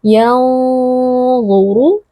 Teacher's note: ru merupakan huruf tebal, angkat pangkal lidahnya